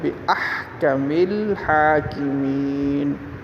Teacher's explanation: ہا کو درمیان حلق سے ادا کریں گے، اور اسی طرح ہا کے اوپر کھڑی زبر ہے، اس کو تھوڑا سا لمبا کر کے پڑھیں گے، حاکمین، یا ساکن ما قبل مکسور ہے، اس کو بھی لمبا کر کے پڑھیں گے، صدق اللہ العظیم۔